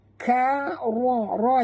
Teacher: Ka ra yang tebal, ra tafkhim ya.